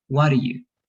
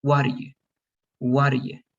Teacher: it's going to change a little bit like what are you and i don't pronounce the t that's the big difference